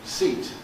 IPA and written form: siːt (seat)